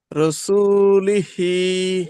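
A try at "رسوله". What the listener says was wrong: রুসু টান কেন দিলেন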